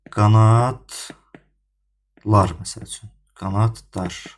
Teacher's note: Sondakı bax D hərfi yenə T-ya çevrilir.